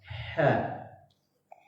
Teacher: huruf ha yang posisinya makhraj hurufnya, tempat keluarnya itu di posisinya di tengah tenggorokan.